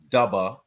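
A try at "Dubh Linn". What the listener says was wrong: It's pronounced dove, brother. Dove. Yeah, it's pronounced the BH as a V, just like with Siobhan.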